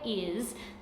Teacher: the letter s is making a z sound instead of its s sound